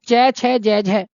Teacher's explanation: अब इन्हें स्पर्श संघर्षी क्यों कहते हैं, क्योंकि ये छूते भी हैं और साथ में घर्षण भी करते हैं